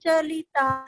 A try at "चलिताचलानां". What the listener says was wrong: चलानम नहीं, चलानाम, बड़ा आ है।